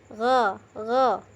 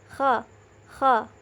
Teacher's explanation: tenggorokan bagian atas, yaitu tempat keluarnya huruf kha dan ghain